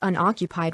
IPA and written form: ʌnˈɒkjʊpaɪd (unoccupied)